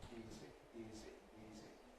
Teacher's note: the voicing continues throughout without any interruption, because the whole thing requires voicing. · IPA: [ˈiːzi]